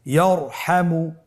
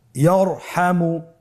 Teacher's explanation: তাহলে ইয়ারহামু, র সাকিন তার পূর্বে জবর আছে, র সাকিন তার পূর্বে যদি জবর থাকে অবশ্যই রকে পোর করে মোটা করে পড়তে হবে।